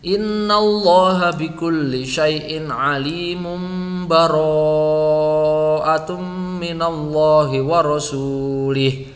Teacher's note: Kalau dia mau diwasol kepada surat at-taubah, maka tanwin tadi ini yang ada di sini, mim bertanwin ini, berdomah tanwin akan bertemu dengan ba, maka dia dibaca iklab